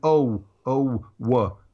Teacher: your mouth is in the position of the W sound wha at the end of saying oh